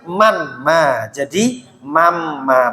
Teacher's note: suara nun sukun berubah menjadi suara mim sukun dinamakan gunah sebab nun sukun bertemu mim